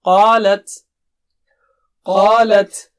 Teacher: قا اونچا موٹا ہے، رائٹ، اور لت پتلا